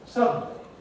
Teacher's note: a consonant that is syllabic, that makes a syllable on its own. Usually, to have a syllable, you've got to have a vowel. · we go straight from D to N. Nevertheless, the word still has three syllables. Suddenly. So, what we have here is a consonant that is syllabic, that makes a syllable on its own. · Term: syllabic N